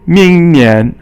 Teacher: Ming is second tone, and Nian is second tone, and that means next year.